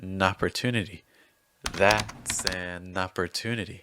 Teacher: then n in an links with the o in opportunity